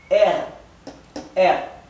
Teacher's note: Recuerden que la r alemana es más gutural que dental